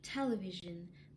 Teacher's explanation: In the word television, the primary stress belongs to the syllable te because of its strongest prominence. The half stress is the syllable li with full vowel, and the syllable v, it's a little bit weaker than the main stress, so it is the secondary stress, and the last one is unstressed.